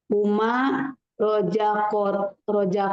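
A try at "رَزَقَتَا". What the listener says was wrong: Hati-hati jangan roja, tapi roza. Zai, roza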